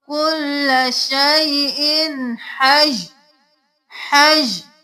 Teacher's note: صرف ہا کے ساتھ یا کی آواز آئے گی، تنوین گر جائے گی